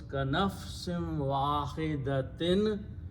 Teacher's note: In the tajweed, when waw and noon sound come together, it becomes noon gunna idgham. So it becomes kanafsim wahidatin.